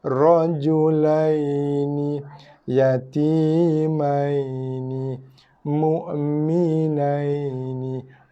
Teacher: ya dan waw ketika itu wajib dibaca dengan sifat lin, lunak dan lembut.